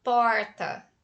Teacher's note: constatamos um R retroflexo, conhecido também como R caipira por alguns linguistas, como Amadeu Amaral, em Goiás, falaria porta, né?